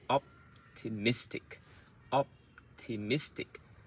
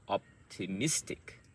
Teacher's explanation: So op is also medium loud, but miss is the most stressed.